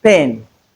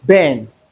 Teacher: These two are bilal sounds that is they articulated with the help of the two lips. But the difference between the two sounds is that one is voiceless whereas the other is voiced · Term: voiceless sound, bilabial sounds